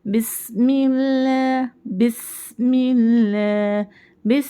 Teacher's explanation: जब हम पढ़े तो सीति की आवाज क्लियर आनी है · جیسے ہم تسمیہ میں پڑھتے ہیں نا، بسم اللہ بسم اللہ، بس میں سین جب ہم پڑھ رہے ہیں تو سیٹی کی آواز کلیئر آنی ہے